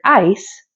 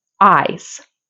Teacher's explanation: s is the unvoiced version of the voiced Zed or z sound